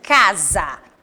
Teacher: casa foi escrita com s mas tem um som de z